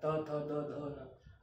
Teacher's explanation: तवर्ग दंत, दंतव्य होता है। त थ द ध न, इनमें दांत पे हवा पास होती है।